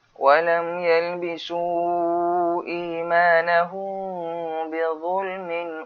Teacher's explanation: Mim mati bertemu dengan ba. Apa dia? Bacaan dia seperti bacaan iqlab. Buka sikit mulut.